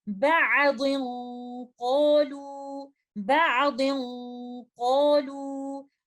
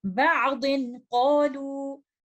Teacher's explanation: तो यहाँ पर नून साकिना जो तनवीन में छुपा हुआ है उसके इख्फा की कंडीशंस हैं, और हम ये बात जानते हैं कि लेटर कॉफ और कैफ का इख्फा थोड़ा सा मुख्तलिफ इसलिए होता है क्योंकि इस इख्फा की सूरत में हम लेटर कॉफ और कैफ के मखरज पर जाकर गुन्ना को देते हैं। यहाँ पर हम इसको कंप्लीट गुन्ना का टाइम देते हुए इस तरह से पढ़ेंगे, बादिन क़ालू, बादिन क़ालू।